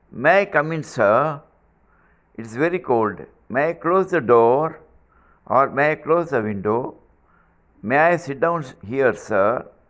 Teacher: now look at the intonation it ends up with Rising tone